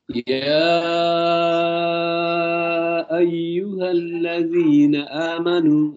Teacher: ya ini harus panjang ya, sampai 4 atau 5 harokat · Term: mad wajib muttasil